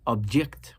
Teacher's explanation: We naturally emphasize the first syllable when we use this word in reference to an entity, an item, something, an object. However, if I emphasized and placed my nabr on the second syllable and I say object, this now becomes a verb.